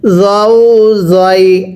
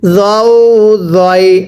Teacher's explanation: জটা উচ্চারণের সময়ও আপনার জিহ্বাটাকে দাঁতের আগার সাথে লাগিয়ে পড়তে হবে